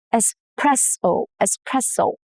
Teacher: No X sound at all. The S stays intact and the stress falls on the second syllable, which is press.